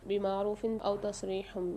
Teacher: دو زیر کی تنوین کے بعد الف آ رہا ہے، یہاں اظہار کر کے پڑھیں گے، غنہ نہیں کریں گے